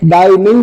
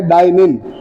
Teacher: जी sound जो है वो ड्रॉप करता है, जैसे डाइनिंग को वो कहता है डाइनिन।